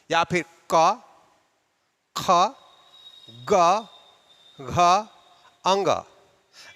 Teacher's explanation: कंठ का योगदान होता है का ग ग अंग देखेंगे की कंठ के पास स्पर्श के साथ आवाज बाहर आई है · देखेंगे कि कंठ के पास स्पर्श के साथ आवाज बाहर आती है, इसलिए इन्हें कंठ्य वर्ण कहते हैं। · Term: कंठ वर्ण